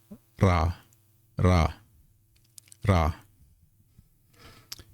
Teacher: if it's at the beginning it's going to make an R sound and that's more like a rolled R sound